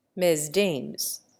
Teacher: And in the same way, Mesdames becomes Mesdames, with the first syllable rhyming with says, and the second, which bears the accent, with games